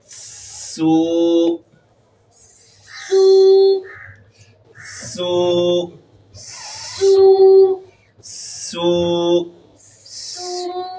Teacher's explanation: یہاں پر آپ نے سیٹی کی آواز نکالنی ہے سین میں، چونکہ سین ہے، سین میں سیٹی کی آواز آئے گی